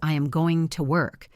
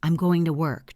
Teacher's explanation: We crush these small words. The word to often becomes TA. We do not say, I am going to work. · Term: reduction